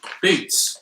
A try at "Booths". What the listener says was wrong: No, not boots. Booths. Booths. Add an H. Booths.